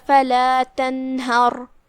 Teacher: آخری میں را ہے اور اس پہ جزم ہے، کیونکہ ہم یہاں رکیں گے تو ہم را پہ جزم سے رکیں گے لہذا یہاں را کا حکم ہے تفخیم، کیونکہ اس سے پہلے والے حرف پہ مطلب ہا پہ زبر ہے